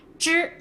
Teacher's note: First tone, high pitched and flat.